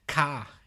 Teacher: in an Australian accent they would make even less R sound than an english-speaking person